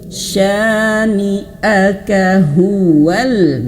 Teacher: huwal langsung ke huruf lam. Hamzah wasalnya tidak dibaca.